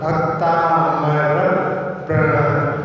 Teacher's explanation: तो प्रा शब्द जो है वो संयुक्त अक्षर है। पा और रा 2 व्यंजनों के बीच में कोई स्वर नहीं है। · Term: स्वराघात